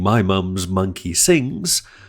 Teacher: All of the three English nasals are voiced sounds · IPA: / maɪ mʌmɪz ˈmʌŋk.i sɪŋz /